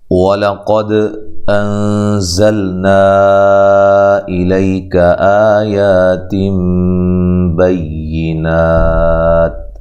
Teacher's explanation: واو کو ادا کرتے ہوئے ہونٹوں کو گول کرنا ہے، لام کو باریک پڑھنا ہے، لام کے اوپر زبر ہے۔